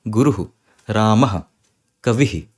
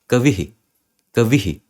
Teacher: जिस डायरेक्शन में जा रही है आपकी भाषा उसी डायरेक्शन में बस आखिरी में थोड़ी सी और एक्स्ट्रा एयर, एक्स्ट्रा हवा छोड़ देनी है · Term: विसर्ग का साउंड